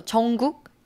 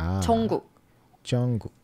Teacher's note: We're saying the K, but final consonants are very short, so 정국. It's K but very short, strong.